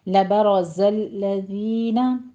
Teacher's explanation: रॉ मुफ़ख़म पढ़ी जाएगी, ज़य की आवाज़ सीटी की आएगी और लज़ीना में दाल नरमी से होगा, यहाँ आपने सीटी आवाज़ नहीं अदा करनी।